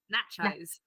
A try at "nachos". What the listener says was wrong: No, there's no R there. That's nah. That's like nah.